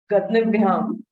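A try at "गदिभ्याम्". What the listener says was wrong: Gadibhyam. The Nakara gets deleted, so Gadibhyam. Yes.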